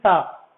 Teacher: دیکھیے عربی بہت نازک زبان ہے، اس لیے دیکھیے ایک حرف آتا ہے سا، اس کو پڑھیں گے سا، یہ مشق کرنے کی کوشش کریں گے، یہ کیسے نکالیں گے؟ سا، زبان کی نوک لگ رہی ہے، دانتوں سے لگ رہی ہے، سا نکل رہی ہے بالکل نرمی کے ساتھ میں